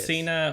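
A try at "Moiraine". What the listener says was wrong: All right, so you don't think it's Masana? Masana. it's 2 A's, not an I.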